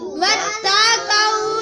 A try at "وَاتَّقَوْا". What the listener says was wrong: قاف کے اوپر زبر ہے، پیش نہیں، وَاتَّقَوْا پڑھیں گے. کیا وَاتَّقُوا نہیں پڑھا جائے گا، وَاتَّقَوْا پڑھا جائے گا.